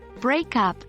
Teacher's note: In this example, the stress falls on the verb, break, while the particle, up, is unstressed. Remember, when pronouncing phrasal verbs with stress on the verb, give extra emphasis to the main verb and reduce the stress on the particle.